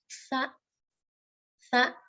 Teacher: Jadi lidah nempel di atas gigi. Lidah nempel di ujung gigi atas ya. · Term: huruf sa